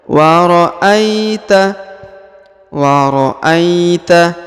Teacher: Huruf A di depannya terdapat ya sukun, maka diayun dan diayun ya, diayun dengan lembut, kurang lebih 2 harokat ya. Wa ra'aita, wa ra'aita.